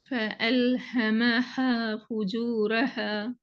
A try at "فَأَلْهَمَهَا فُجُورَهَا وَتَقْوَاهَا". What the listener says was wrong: ஹே தானே வருது, இன்னும் நாக்கு தூக்குப்படுது. ஹேன்னு தான் வருது. ஓதுங்க, ராகம் எடுத்து ஓதுங்க, ஹாவை நீட்டுங்க, அப்பதான் ராகம் வரும். فألهمها فجورها وتقواها. டோன் எடுங்க, டோன் எடுத்து ஓதுங்க, ராகம் எடுங்க.